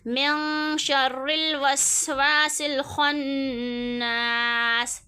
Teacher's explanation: یہاں پہ نون کے بعد شین اخفا ہو گیا، را باریک ہو گیا، یہاں پہ زبر ساکن الف مدہ، اور یہ سین کو لام کے ساتھ ملایا۔